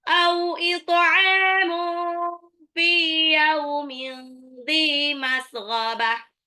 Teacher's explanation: Gha ini agak ngorok ya.